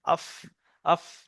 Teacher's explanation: নিচের ঠোঁটের ভিজে অংশে সামনের উপরের দুই দাঁতের আগার সাথে লাগে উচ্চারণ হয় আফ, আফ। দেখেন আমার দাঁতটা এসে ঠোঁটের আগা ভিজেই লাগছে, আফ। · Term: ফার মাখরাজ